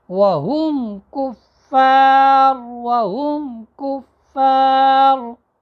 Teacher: قاعدہ یہ ہے کہ میم ساکن کے بعد با، میم اور الف کے علاوہ باقی 26 حروف میں سے کوئی بھی حرف آ جائے تو میم کو اپنے مخرج سے ظاہر کر کے پڑھیں گے، واضح کر کے پڑھیں گے